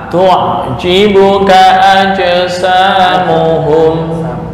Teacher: ka pendek digabung langsung ke a